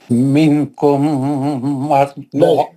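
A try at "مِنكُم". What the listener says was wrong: نون کا اخفا کر کے پڑھیے. منکم نہیں ہے وہ.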